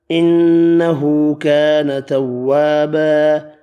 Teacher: اس آیت میں نون مشدد پر غنہ کیا، الٹا پیش، الف مدہ ایک ایک الف کی مقدار میں کھینچ کر پڑھا، وف کی صورت میں تنوین ایک زبر میں تبدیل کیا اور الف مدہ پڑھا، الف مدہ ایک الف کی مقدار میں یہاں بھی کھینچ کر پڑھا۔